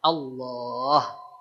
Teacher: tebal bukan di-o-kan. Caranya dengan si pangkal lidah kita yang diangkat agar keluar suara yang tebalnya.